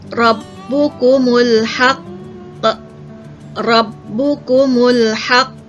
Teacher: Qalqalah kubra detakkan kuat. Qalqalah akbar detakkannya lebih kuat daripada qalqalah kubra